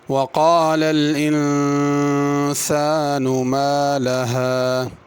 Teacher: قال کی قاف پر کرنی ہے، کالا نہیں پڑھنا